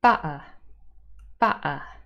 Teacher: So the word butter in Cockney accent with a glottal stop